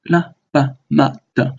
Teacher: Neutral tone, remember that the vowels shorten in length.